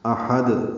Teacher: حمزہ اقصی حلق سے، ہا وسط حلق سے اور دال ساکن پہ قلقلہ ہوگا